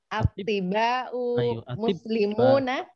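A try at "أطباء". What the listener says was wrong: Ayo, atibba'u ya, atibba'u. yang tasdidnya itu di huruf ba, bukan di huruf to.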